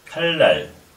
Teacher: 리을과 니은이 만났을 때 리을, 리을로 읽으라는 거죠.